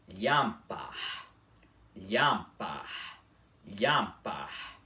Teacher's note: não é lhampar, com esse I mais demorado, e sim lhampar. O I é mais rápido